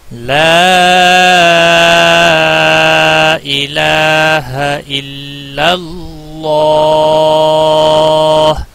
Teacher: اللہ کے لام کو پر پڑھا جائے گا کیونکہ پچھلے حرف کے اوپر زبر ہے، اگر زیر ہوتی تو باریک پڑھا جاتا